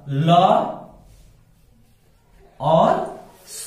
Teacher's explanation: इन सब का उच्चारण स्थान क्या है? दंता, यानी दांत से ये बोले जाते हैं, दांत के प्रयोग से ये बोले जाते हैं, इसलिए इन्हें कहा जाता है दंत्य वर्ण।